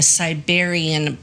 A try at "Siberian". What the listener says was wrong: Tomato, tomato. You put the wrong emphasis, the wrong syllable.